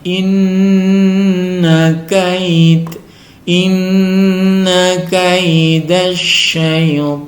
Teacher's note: Inna Nun bertasjid dibaca gunah